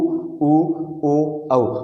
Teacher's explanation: इनका आप उच्चारण करके देखिए दोस्तों, ओठों की आकृति गोल हो जाएगी। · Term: वृत्ताकार